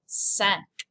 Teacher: normally the letter I makes an E sound in French. However, when it's next to the letter N, it becomes a nasal.